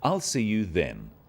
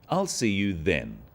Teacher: is now a definite commitment and an end to the arrangement notice how the stress is on the word then to confirm that the time is definite